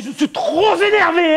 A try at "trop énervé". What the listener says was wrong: Non, P, on fait la liaison trop énervé. Non, Z énervé.